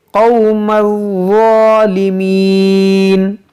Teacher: اس ضا کو نرمی سے اور موٹا کر کے ادا کرنا ہے